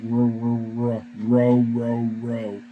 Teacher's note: ours isn't a tap ours is a it's what's called a liquid or it just kind of flows